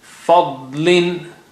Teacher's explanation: Again, da is very thick and high sounding.